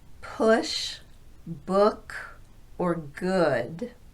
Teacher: This is the counterpart to the long oo sound. It's not as rounded or as forward in the mouth as the oo, but more central